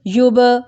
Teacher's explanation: یوب کلکلا کیا با پہ